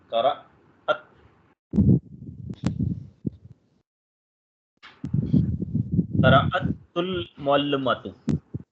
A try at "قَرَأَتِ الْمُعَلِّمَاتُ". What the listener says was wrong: نہیں قرأت ہم کسرت دیں گے آگے ملانے کے لیے نا، کسرت دیں گے.